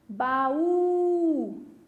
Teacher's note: Perceberam que eu puxei na sílaba U? É a sílaba mais forte. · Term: sílaba forte